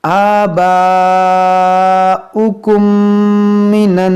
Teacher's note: मीम साकिन के बाद दूसरी मीम है, यहाँ पर इदगाम शफ़वी है